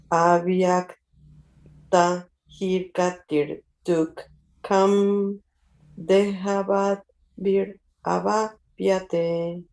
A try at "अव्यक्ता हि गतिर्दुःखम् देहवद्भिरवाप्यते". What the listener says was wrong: Yes, very good.